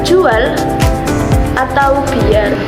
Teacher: bunyi W dan Y dilafalkan sebagai bunyi Glide